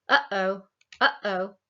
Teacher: We actually have a glottal stop when we say something like uh-oh, uh-oh. Like between the and the o, there's this glottal stop, but it's not a phonemic difference in our language.